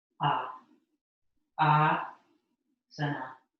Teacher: And so the emphasis is on the first syllable. Ah, asana. So that would just be like a long A, although because it's first like that, it's not written like that.